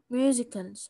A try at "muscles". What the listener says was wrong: muscles. لا دي مش musical. muscles muscles حرف السين مش بنطق.